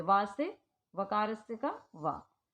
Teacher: इसमें सिर्फ वा हमारा दंत ओष्ठ वर्ण है